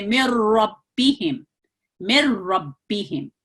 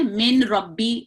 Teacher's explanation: نون کی آواز مکمل طور پر غائب ہو جاتی ہے، اس کو نہیں پڑھا جاتا. متحرک میم ہے، یہ را میں شامل ہو رہا ہے، اور اس کو ایسے پڑھیں گے من ربیہم، من ربیہم، ٹھیک ہے.